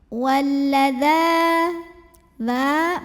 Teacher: Walladza dza mad-tabi'i muqaddar. Karena ada baris fathah panjang pada huruf dzal, maka kita baca panjang dzalnya 2 harokat saja.